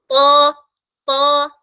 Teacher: നമ്മൾ നാവിന്റെ back side ഉയർത്തി പറയണം എന്നാലേ ആ ഹെവി സൗണ്ട് വരുള്ളൂ